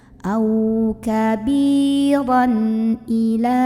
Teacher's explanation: Karena ada tanwin fathah yang ketemu sama huruf halqi, huruf tenggorokan yaitu huruf hamzah. Maka cara membunyikan tanwinnya ini adalah dibunyikan dengan jelas, bunyi an. Dan tidak perlu ditahan. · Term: idhar halqi